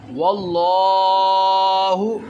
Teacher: لام کو لمبا ہم نے اس لیے کیا کیونکہ اس کے اوپر کھڑا زبر ہے، جس حرف کے اوپر کھڑا زبر آ جائے اس کو ایک الف کے برابر لمبا کر کے پڑھتے ہیں۔